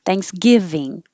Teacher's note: The stress is on the give.